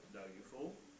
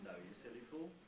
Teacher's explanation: And you can see that actually the last syllable is will be slightly rising. The nucleus itself won't rise very much. The last syllable in the tail will rise.